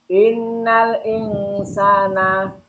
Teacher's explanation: termasuk bacaan gunah musadadah. Alasannya ada nun tasdid. Cara bacanya gunah tiga harokat.